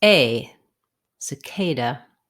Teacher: the word cicada has second syllable stress the k should be long and have a clear vowel the